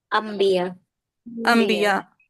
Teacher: نون ساکن کی آواز کو میم ساکن کی آواز سے بدل کر پڑھنا ہے